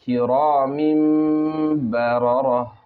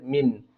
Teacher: حالانکہ تنوین کے آخر میں نون کی آواز آتی ہے، جیسے میم دو زیر من، لیکن نون کو میم سے بدل دینا ہے